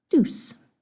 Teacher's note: The j sound has been changed to a d.